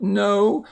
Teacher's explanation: Notice the O-W here has the long O's, not the ow sound, but the long O sound.